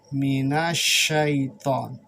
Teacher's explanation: Alif lamnya dihilangkan sehingga shinnya itu ditasydidkan. Karena itu huruf syamsiah.